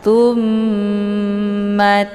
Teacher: cara bacanya ditekan kemudian ditahan sehingga terbentuk suara yang mendengung